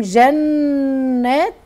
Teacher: نون مشدده غنه حركتين